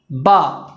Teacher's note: با ادا ہوتا ہے دونوں ہونٹ کی، دونوں ہونٹ سے با ادا ہوتا ہے، دونوں ہونٹ کی تری سے با ادا ہوتا ہے